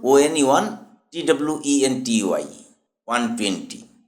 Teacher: 120 শব্দটি WAN, ওয়ান দিয়ে শুরু হয়, ওন নয়, যা একটি ব্যঞ্জন ধ্বনি, মানে কনসোনান্ট সাউন্ড